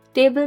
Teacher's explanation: टेबल में हम टे को ज़्यादा स्ट्रांगली पढ़ते हैं, उसको लॉन्ग करते हैं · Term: सिलेबल स्ट्रेस